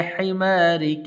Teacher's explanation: काफ को लंबा नहीं करना